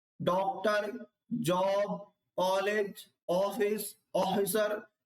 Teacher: यह हिंदी में आ और ओ के बीच की ध्वनि है